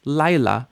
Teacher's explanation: the yud is sort of mushing into the vowel that's there